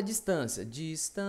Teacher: Duas vogais juntas, cada uma com seu som. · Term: ditongo